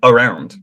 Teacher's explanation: We always say around. We have to have the the schwa in there.